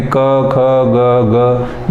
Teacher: क, ख, ग, ग ये सारे हम कंठ से बोल रहे हैं